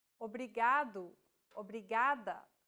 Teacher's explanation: think of the quick tapping motion your tongue makes as it strikes the top gum Ridge